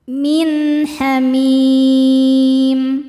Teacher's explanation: Selanjutnya ada hukum idhar halqi. Karena ada nun sukun bertemu dengan huruf halqi atau huruf tenggorokan yaitu ha. Cara bacanya nun sukun dibaca dengan jelas.